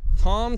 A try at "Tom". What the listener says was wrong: Did you pronounce Tom as Thom?